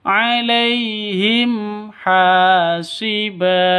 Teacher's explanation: Mim mati bertemu dengan ha, jelas terang. Kenapa? Karena bacaan izhar halki. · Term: izhar safawi